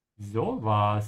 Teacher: Stretch the O a little bit to sound natural